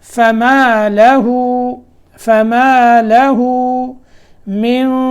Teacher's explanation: یہاں اخفا ہے، اخفا کو موٹا کرنا ہے کیونکہ اس کے بعد آگے جو قاف ہے وہ موٹا حرف ہے ، تو یہاں اخفا جو ہے موٹا ہوگا۔ فما له من